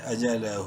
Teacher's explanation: الٹا پیش کی وجہ سے ہا کو ایک الف کے برابر لمبا کریں گے